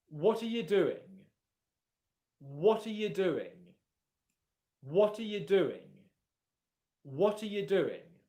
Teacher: Can you hear how the pronunciation of the word you is very different? It's not you, it's ya. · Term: weak form